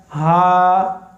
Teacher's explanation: ये हलक के नीचे वाले हिस्से से अदा होता है।